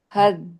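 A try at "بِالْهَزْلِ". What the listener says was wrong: Sama, Z mengalir, kalau bisa nggak ada E-nya. Kalaupun ada E-nya, jangan keras-keras E-nya. Dan L-nya harus jelas. L-nya belum tampak.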